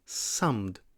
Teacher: But that cluster of M and D can be difficult to say. To pronounce the M sound, you close your lips and let your voice travel through your nose. To pronounce the D sound, you put the tip of your tongue somewhere behind your teeth.